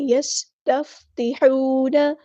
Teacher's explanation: سین کی سیٹی واضح کریں